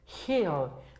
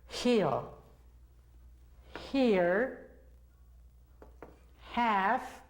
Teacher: Las cuerdas vocales no suenan, no vibran, solo se hace como en el caso de la palabra had. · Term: sonido de la H